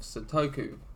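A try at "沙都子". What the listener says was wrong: Satoko. not Satoku. Like, your pronunciation was such a butchering of that name.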